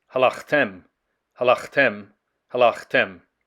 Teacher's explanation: notice the vowel reduction there in the first syllable